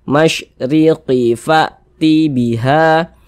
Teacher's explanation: maka huruf ra dibaca tarkik, dibaca tipis, sehingga pangkal lisan kita tidak naik terangkat ke atas. Nah, tipiskan huruf ra-nya.